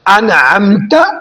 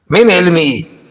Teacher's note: اگر یہ نون ساکن کے بعد یہ آ رہے ہو تو نون غنہ نہیں ہوگا، یعنی ناک میں آواز نہیں جائے گی، نون اپنے مخرج سے ظاہر ہوگا۔